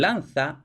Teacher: En español actual tenemos el fonema Z, fricativo interdental sordo, por supuesto.